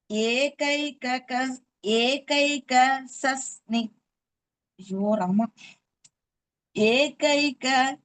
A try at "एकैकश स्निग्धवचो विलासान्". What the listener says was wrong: சஸ்னின்னு வைக்காதீங்க. ஏகைகஷ ஸ்னிக்த வச்சோ விலாசான்.